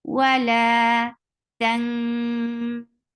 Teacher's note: You're hiding the sound of noon here because this is ikhfa.